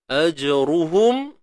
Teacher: Ajruhum, ra baris depan, ru tebal.